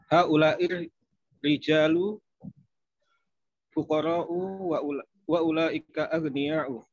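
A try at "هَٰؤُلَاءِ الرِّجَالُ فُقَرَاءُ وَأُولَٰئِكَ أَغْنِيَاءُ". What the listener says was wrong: Betul, baik, monggo diartikan.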